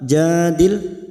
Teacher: lam sukun jangan sampai memantul